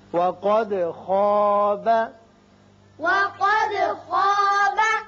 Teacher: خا پر پڑا جاتا ہے، اس کی وجہ سے الف بھی پر ہوگا